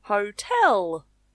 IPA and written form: hoʊˈtɛl (Hotel)